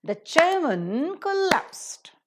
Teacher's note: So in order to maintain the rhythm, the syllable timed rhythm, man, which is normally pronounced as man, is reduced to the pronunciation of the weak or the weaker part, which is mun.